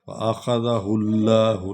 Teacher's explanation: لام کو موٹا کر رہے ہیں کیونکہ پیچھے پیش ہے. پیش اور زبر ہو تو لام پر پڑی جاتی ہے.